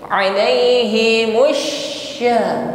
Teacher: Huruf shin sifatnya tafasyi, intisyar riha fil fami, menyebar angin di dalam mulut kita. Alaihi musya lebih kuat tafasyinya.